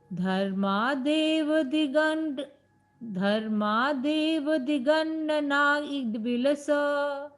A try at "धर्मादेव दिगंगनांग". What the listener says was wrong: हाँ, ये ड नहीं है, वो ng है, तो क ख ग घ ng वाला, इसमें हमें बिंदी लगा देनी चाहिए थी। दिगंग नांग ऐसा। हाँ, धर्मादेव दिगंग नांग